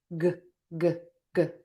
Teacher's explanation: back of the tongue is pulled high up, air is puffing out or stopping, voice box is on and moving